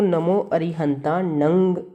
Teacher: तो ये कहीं भी आ सकता है, किसी भी वर्ड के अंदर आ सकता है, जहाँ पर भी लास्ट में अनुस्वार दिया हो वहाँ पर म नहीं बल्कि अंग की साउंड लेनी चाहिए, क्योंकि जो अनुस्वार है वो हमेशा नासिका से लिया जाता है।